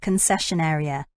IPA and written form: kənˈsɛʃən ˈeərɪə (concession area)